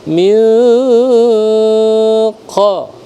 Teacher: Ikhfa samar-samar, bukan min qa tapi min qa gitu ya. Ikhfa disamarkan dengan tetap ditekan selama 2 harakat. Qablu ba qalqalah sugra.